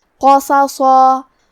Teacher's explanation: کلمت قصصا میں قاف اور حرف الصاد دونوں حروف التفخیم میں سے ہے تو ہم یہ پورے کلمہ کو تفخیم سے مطلب موٹی آواز میں پڑھیں گے